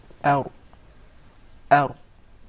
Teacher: That's an English ra now, where the tip of the tongue is far away from the gum.